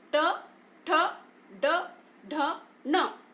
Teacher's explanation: हमारी जीभ तालु के पीछे मूर्धा स्थान जो है अंदर को थोड़ी सी पलटती है, पीछे की ओर पलटती है मूर्धा की तरफ, इसलिए इसे हम मूर्धन्य व्यंजन कहते हैं।